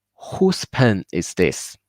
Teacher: the stress should be on who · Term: logical stress